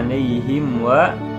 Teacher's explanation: Alaihim wa, nada alaihim wa, mim mati menghadapi huruf waw, yaitu izhar syafawi ya, jadi mimnya dibaca jelas